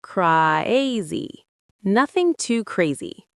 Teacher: Make the cra part of crazy a little longer and then drop the pitch. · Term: falling intonation